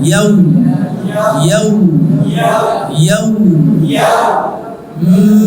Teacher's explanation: অনেকে আছে আমরা পড়ি মালিকি ইয়াউ, ইয়াউ মোটা করে, ঠিক না? মোটা করা যাবে না।